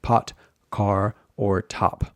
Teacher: there's a burst of air that comes out when we say words like pot, car, or top. But in English, when we put an S before those sounds, that aspiration is what it's called, that h sound is reduced.